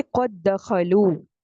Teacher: اب دیکھیں قد دخلوا میں دال جو ہے وہ ساکن ہے، پہلا دال ساکن ہے، اس کو دوسرے والے دال میں داخل کر دیا گیا. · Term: ادغام صغیر